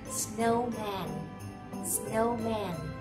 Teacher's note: Mình sẽ thấy này, từ này hai âm. Nhấn vào âm đầu tiên. Âm đầu tiên mình sẽ đọc là snow. Mình đọc lên này, âm thứ hai mình đọc xuống.